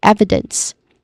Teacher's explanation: also has three syllables which stress on the first syllable e which has a short e vowel sound and then followed by second syllable e short e vowel sound which is soft also.